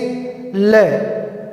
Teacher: हम जब इस ल का उच्चारण करते हैं तो हमारी जो जीभ है वो बीच में से, जीभ का जो मध्य भाग है वो ऊपर उठता है और वायु जीभ के दोनों बगलों से बाहर निकलती है, उसे पार्श्विक व्यंजन कहते हैं।